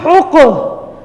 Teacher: قاف کو موٹا کرنا ہے اور یہ حروف قلقلہ میں سے ہیں۔ پہلے قاف کو ہا کے ساتھ ملائیں گے، پھر قاف کی اپنی حرکت کے ساتھ اس کو پڑھیں گے، ہا قاف پیش حق، قلقلہ ہوگا نا حق۔